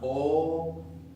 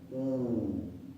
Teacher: Para la O es más abierta, para la U es más cerrada.